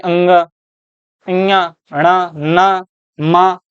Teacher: यही अगर हम बात करते हैं आपका जो पंचमाक्षर होता है, ये जो आपका पंचमाक्षर है इसको हम नासिक के वर्ण ही बोलते हैं, क्योंकि इनको बोलने में नाक का प्रयोग होता है, जैसे अंग, ञ, ण, न, म, इनको हम बोलते हैं नासिक्य।